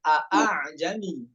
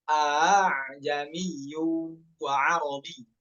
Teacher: Yang hamzah yang pertama tahqiq, yang hamzah keduanya itu dibaca tashil.